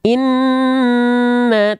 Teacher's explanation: nun bertasdid tahan bacaannya dua harakat ya tidak tidak ditekan